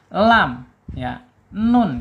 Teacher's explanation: Yaitu ujung lidah ya menyentuh langit-langit yang depan di bawah huruf lam ya.